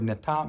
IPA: nɪtaʔ